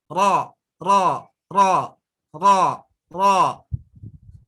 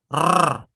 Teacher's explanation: Patokannya takrir bergetar di ujung lidah.